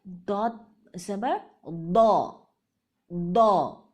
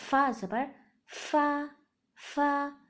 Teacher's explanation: فا بالکل باریک ہو جاتی ہے فا کی آواز